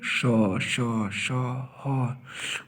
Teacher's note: और श श श ह, आप बोल के देखिए, श श श ह, उष्मा निकल रही है आपके मुंह से, तो इसको उष्मा व्यंजन कहते हैं या संघर्षी भी कहते हैं